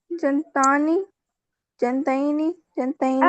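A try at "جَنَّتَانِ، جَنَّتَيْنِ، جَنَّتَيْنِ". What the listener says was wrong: آپ نون کو ساکن کیوں کر رہی ہیں، جن کیوں؟ جنتانی، جنتینی، جنتینی۔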